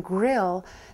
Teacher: the gr in a blend as in grill the mouth really puckers up very tightly for that r sound before a vowel so there is a very slight uh phonetic allophonic variation there